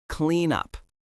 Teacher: Clean ends with an N. Up starts with a U. When we say this naturally, the N moves over. It sounds like clean up.